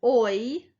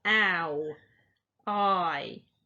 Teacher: your mouth moves between them and that's called a diphthong